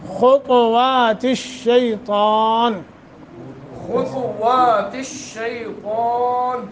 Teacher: یعنی خا تا وا سب کو موٹا، اور الشیطان یہ تا بھی موٹا ہے.